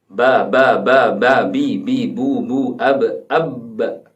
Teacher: Ternyata ba ada di bibir, kedua bibir.